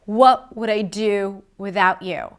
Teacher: We have 3 stressed words. What, do, without, right? What, the question, do, the action, without.